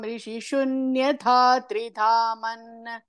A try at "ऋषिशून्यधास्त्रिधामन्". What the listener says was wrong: தாத்ரிதாம், தாஸ்திரி, அங்க ஒரு இஸ் இருக்கு பாருங்க.